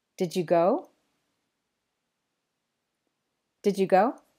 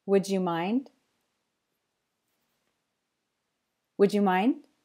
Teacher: try to make the J sound at the word boundaries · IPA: /ʤ/